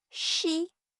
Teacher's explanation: The vowel E is made high and forward in your mouth. That position drags 시옷 forward too, and forward S sounds like sh. 쉽게 말하면 your tongue is already getting ready for E while it makes 시옷.